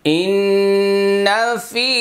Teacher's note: ইন্নাটা হলো ওয়াজিব গুন্না আর ফিটা হলো এক আলিফ টান।